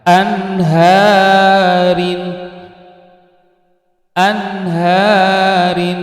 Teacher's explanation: Kemudian kalimat selanjutnya adalah anharin, anharin, pada kalimat ini yaitu ada nun sukun bertemu dengan huruf h, maka wajib dibaca idhar, itu jelas atau terang, tidak boleh mendengung